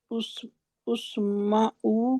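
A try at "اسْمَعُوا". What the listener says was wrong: नो, पहले पर हमजतुल वसल पर क्या लगेगा? तीसरे हर्फ पर जबर है तो जबर बदलेगी, नहीं जबर बदलेगी जेर में, इस्माऊ।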